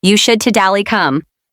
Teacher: Notice how totally sounds like toally. Native speakers often drop the middle T sound in fast speech.